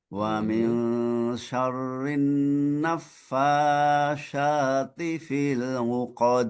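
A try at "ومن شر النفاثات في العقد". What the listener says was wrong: Ini ta, bukan huruf sya. Nafasa. Sa yang lidahnya melet. Nafasati fil 'uqad.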